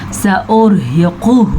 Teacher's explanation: موٹا قاف اور اس کے اوپر پیش ہے تو اس کو لمبا نہیں کرنا. ہاں الٹے پیش کو آپ لمبا کریں گے کیونکہ الٹا پیش لمبا کیا جاتا ہے.